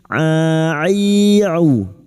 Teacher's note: huruf ain wastul halqi atau tengah tenggorokan, jangan samakan dengan hamzah